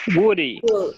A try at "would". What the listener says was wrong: Would. Like Woody, but you don't say D, just would.